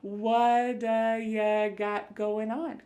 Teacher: that T at the end of the word what is going to change to a D sound. This is really typical of American English where a T that's surrounded by vowel sounds is going to change to a D. It's called a flapped T and it just kind of uh rolls off your tongue in a smooth way.